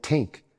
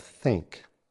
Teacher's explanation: Some Learners keep their tongue behind their teeth instead of placing it between them, and this can make the TH sound unclear or cause it to sound like a /t/ or a /d/.